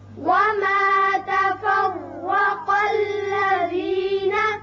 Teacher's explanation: تفرق را پر ہوگا اوپر زبر ہے